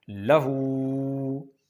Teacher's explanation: ہا پر الٹا پیش ہے، اس کو ایک الف کے برابر لمبا کرنا ہے، یہ کھڑی حرکات میں سے ہے۔